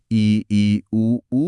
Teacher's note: बिल्कुल वही लॉजिक है और इसका ठीक उल्टा है संवृत यानी लगभग बंद। इ ई उ ऊ बोलते समय आपका मुंह लगभग बंद रहता है। · ई, ऊ बोलते समय आपका मुंह लगभग बंद रहता है।